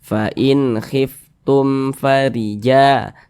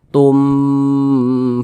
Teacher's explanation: ya bukan huruf ba bukan huruf mim maka hukumnya izhar syafawi karena dia izhar maka dibaca jelas tidak berdengung baca pendek saja